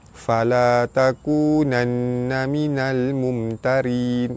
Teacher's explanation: Nun sabdu wajibul gunnah, ditekan dan ditahan serta dengung 2 harakat.